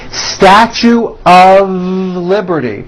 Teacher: notice how I connected the word of with the word liberty · we pronounce the word of with a voiced V.